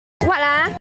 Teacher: from the rising intonation pattern, you can expect that this would be a question